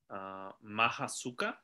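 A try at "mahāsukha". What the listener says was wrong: Perfect. Exactly. Don't forget that. Don't forget Mahasuka.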